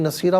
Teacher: اسے نصیرن پڑھیں گے، وقف کی صورت میں نصیرہ پڑھا جائے گا، دو زبر کی تنوین وقف میں الف سے چینج ہو جاتی ہے